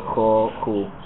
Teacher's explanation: some people in Argentina will actually pronounce a h version, especially with like vowels that are further back in the mouth, so jo, ju.